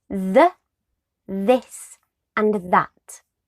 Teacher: it's known as a voiced and a dental fricative sound what this means is that we create the sound of the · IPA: / ð /